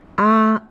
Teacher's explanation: the first tone is high and level with a pitch value of five five it is important to keep one's voice flat across the whole